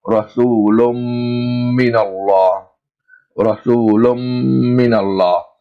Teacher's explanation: Lam got Tanween, Lun. So we join the two words together and we have Lum. And we stretch that joining sound 2 times its original length. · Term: Idgham Nun Sakina and Tanween